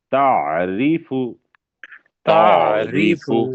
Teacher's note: عین جو ہے وہ حروف ہلکی ہے، رے کو پتلا پڑھیں گے